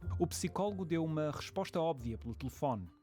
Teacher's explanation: os portugueses não adicionam i em psicólogo e óbvio